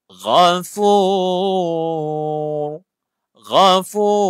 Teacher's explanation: Huruf ra ni bila dimatikan dan huruf sebelumnya baris depan dia dah jadi tebal.